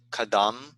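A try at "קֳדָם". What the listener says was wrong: Technically, you would say Kodam because it's a O.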